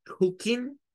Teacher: no mencionan la G, omitir la G se vuelve común en esta parte